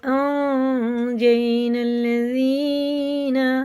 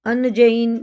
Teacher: اس نون کو ناک میں لے جا کر 1 الف کے برابر سائلنٹ کر کے پڑھنا ہوگا۔ اخفا کی مقدار 1 الف کے برابر ہے۔ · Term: غنہ اور اخفا